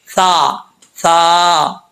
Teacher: نوک اوپر والے دانتوں کے نچلے حصے سے لگے تو سا پڑھا جاتا ہے بغیر سیٹی کے